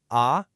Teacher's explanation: Next is the second tone. This one rises up, kind of like how your voice goes up at the end when you ask a question.